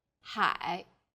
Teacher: a third falling then Rising tone